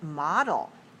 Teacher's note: Model has 2 syllables, and it's stressed on the first. 2-1. Right.